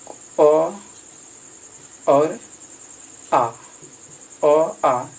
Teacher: अ और आ का उच्चारण स्थान कंठ में है